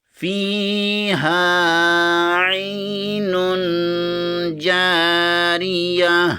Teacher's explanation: نون دو پیش کے آگے جیم آ رہا ہے، جیم حروف اخفا میں سے ہے، یہاں پر اخفا ہوگا،